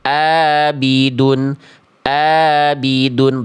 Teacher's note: bunyi ain teman-teman masih jadi hamzah, abidun. Abidun, berarti tandanya teman-teman melafalkan terlalu ke dalam.